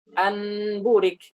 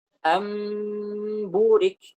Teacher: Kemudian setelah mim langsung ba, karena mim dengan ba itu satu tempatnya, satu makhraj seperti itu.